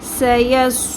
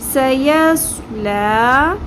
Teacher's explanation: اب یہاں پر ہم دیکھیں گے سین، ایک ہی لفظ کے اندر سین بھی آ رہا ہے، صاد بھی آ رہا ہے. سین کو باریک پڑھیں گے، سیٹی کی آواز سین میں بھی آئے گی، صاد صاد کو پر پڑھیں گے سیٹی کی آواز صاد میں بھی آئے گی